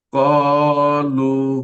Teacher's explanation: ওয়াও মাদ্দাকে এক আলিফ পরিমাণ টান দিয়ে পড়তে হয়